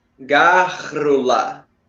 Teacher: Ela tem certos RRs que ela junta um R que é mais profundo, Glotal.